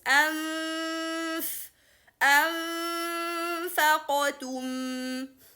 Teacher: let the throat open and allow the sound to run from both mouth and nose for 2 counts. This is the ikhfa.